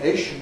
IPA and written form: ˈeɪʃn (-ation)